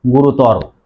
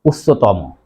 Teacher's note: বিশেষণ শব্দের অন্তে অ এর উচ্চারণ ও এর মত হয়